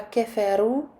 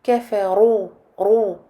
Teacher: Sur le mot qui suit, le verbe kafaru, la lettre ra est mufakhama. La lettre ra surmontée d'une dhamma est emphatique. Donc on ne dit pas kafaru, mais kafaru, ro.